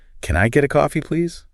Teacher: The pitch goes really high on the word please.